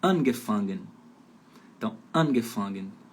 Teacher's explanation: Verbo separável, a sílaba tônica fica ali no prefixo separável, no comecinho da palavra